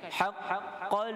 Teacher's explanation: Kita nak sebut qaf tapi kita syaddahkan, tekan. Haqqal. Pada qaf tasydid.